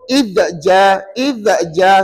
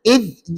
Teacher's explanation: Nak sebut zal ni hujung lidah keluar sikit tapi kena tahan dekat gigi gigi kacip. Maka ada unsur tahankan. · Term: sifat ismat